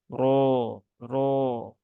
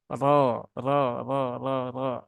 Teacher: Dan roknya ya lupa ya, roknya karena ini berbaris fathah, nah, maka dia dibaca dengan tebal ya, dibaca dengan tebal yaitu dengan cara menaikkan pangkal lidah